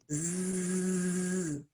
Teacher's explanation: Zzz, lots of vibration here. That's a voiced consonant.